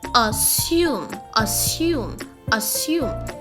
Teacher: There is no z in the word. There's no z in the word. It is s.